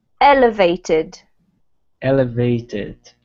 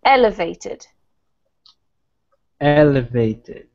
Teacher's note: so the emphasis comes right at the beginning of the word not on the vated